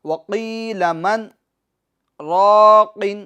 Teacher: اب یہ میں جو من پر رکا ہوں تو من پر میری آواز رکی ہے مگر میری سانس چالو ہے، میں نے سانس نہیں توڑی ہے۔ وقیل من راق، تو اسی کو کہتے ہیں سکتہ، یعنی آواز رک جائے گی مگر آپ کی سانس جاری رہے گی، رک کر اور سانس کو جاری رکھنا ہے، پھر آگے بڑھنا ہے۔